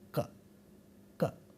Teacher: The place of articulation for ka is this, velum. Therefore, this sound is called a velar sound.